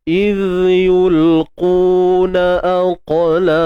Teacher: huruf qaf ni dia bersifat tebal. Jadi sifat tebalnya kita tak boleh buang. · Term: sifat qalqalah